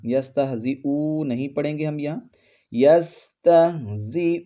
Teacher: حمزہ کے اوپر جو پیش ہے اس کو لمبا نہیں کرنا